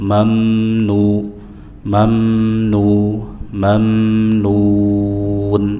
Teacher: Izhar syafawi, jelas di bibir. Rapatkan dulu kedua bibir baru beranjak ke huruf nun. Mamnu, mamnu, mamnun, mad arid lisukun 4 harakat.